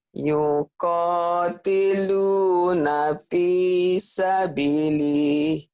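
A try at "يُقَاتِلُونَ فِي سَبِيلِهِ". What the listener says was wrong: Bukan, B-nya panjang. Ya. Ayo lagi.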